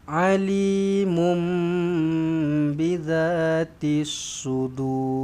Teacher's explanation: Dur ra dekat belakang ni tebalkan sebab huruf sebelumnya huruf dal berbaris depan. Maka dur tebalkan ra lah.